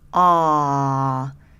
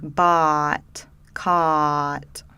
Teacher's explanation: This back vowel is almost like a British really low back, open mouth, ah. So maybe in a word like bought, caught, right?